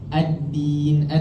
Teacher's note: Dia akan beza dengan huruf dal tadi. Huruf dal dia tak ada angin keluar tapi tekanan dia sikit.